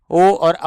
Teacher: एक होता है ओष्ठ कंठ, जिसमें ओष्ठ और कंठ दो का इस्तेमाल होता है। ओ और औ होते हैं जिसमें होठ तो गोल होते हैं, किंतु ध्वनि जो होती है वो हमारी किससे निकलती है, वो हमारी कंठ से निकलती है